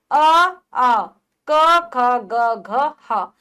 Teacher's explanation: ये कंठ के द्वारा बोले जाने वाले हैं। कंठ से इनका उच्चारण होता है।